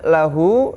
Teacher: dibaca Dua harokat ya dibaca panjang dua harakat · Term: dibaca panjang 2 harokat